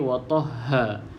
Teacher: Huruf ha ni pastikan huruf ha yang bunyi dekat halqum, yang keluar dekat halqum bahagian paling bawah lah